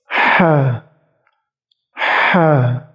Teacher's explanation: Jadi teknik mudahnya yaitu rasakan lidah paling belakang kalian naik sedikit mendekati langit-langit belakang. Kemudian nafas dihembuskan. Ha. Ha. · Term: huruf H